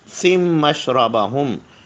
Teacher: آگے میم میں تشدید ہے تو سم پڑھیں گے، سن نہیں پڑھیں گے